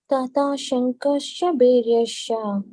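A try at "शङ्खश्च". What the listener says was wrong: Yeah, Bhairyascha is correct. This one is Shankhascha. There is a hyphen on top of it. So Shankhascha.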